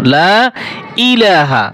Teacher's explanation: অনেকে বলে লা ইলাহা, হবে না কিন্তু। লা ইলাহা, লা 3 আলিফ টান হবে, ইলা এখানে 1 আলিফ টান হবে